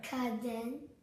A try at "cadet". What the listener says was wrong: You're adding it. Yes, you were adding an N. Cadet.